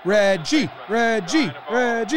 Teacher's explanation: So nowadays we put the emphasis on the second syllable.